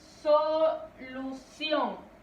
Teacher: Vemos que la mayor fuerza de voz o la sílaba tónica es sion.